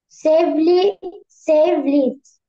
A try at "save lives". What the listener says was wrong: Leaves na lives.